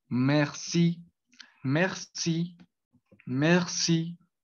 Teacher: esa tiene una acentuación al final de la palabra que pues eh, lo va a dar, pues, a dar ese acento francés.